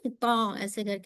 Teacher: इंशा्लाह व तुम ततल किताब अफला तकी झटका नहीं दीजिएगा और आइन को मोटा नहीं त लाइट कीजिए त ठीक है मोटा नहीं कीजिएगा ना झटका दीजिएगा